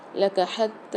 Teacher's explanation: تا کے اوپر کھڑا زبر آ رہا ہے اور تشدید بھی آ رہی، سختی اور جماؤ کے ساتھ بھی پڑھیں گے اور کھینچ کے بھی پڑھیں گے۔